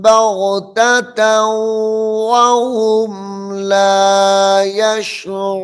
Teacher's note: تا کو واو کے ساتھ ملا کر پڑھیں گے